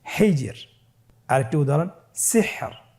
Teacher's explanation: এখানে লাস্টের যে রটি হরফটি রয়েছে, এই হরফটিকে মোটা করে পড়া যাবে না, পড়তে হবে পাতলা করে। তাহলে আমরা বুঝতে পারতেছি র হরফটি ওয়াকফের কারণে সাকিন হলে এবং তার পূর্বে সাকিন থাকলে এবং তার পূর্বে যদি জের থাকে, তাহলে র হরফটিকে পাতলা করে পড়তে হবে।